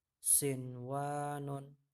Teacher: Sebenarnya nun bertemu dengan wawu kan idgham bihuna juga ya, tapi kalau untuk kata sinwanun itu nunnya harus dibaca jelas karena ini termasuk idhar mutlak atau idhar wajib nama lainnya ya.